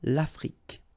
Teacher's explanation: Final E, it's only the k at the end that you will hear.